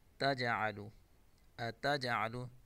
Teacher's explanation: جیم حروف قلقلہ میں سے قلقلہ کریں گے